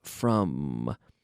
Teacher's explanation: Notice I'm closing my lips. From. To make the M sound.